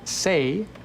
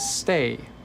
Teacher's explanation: the difference between say and stay is actually a little pause right when the t happens